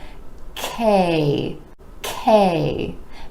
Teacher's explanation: after that consonant sound where the back of the tongue is rising up towards the palate ke ke now the consonant is an air puff sound meaning